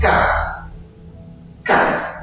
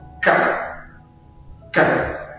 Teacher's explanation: En anglais britannique, vous prononcez le T. En anglais américain, vous ne les prononcez pas.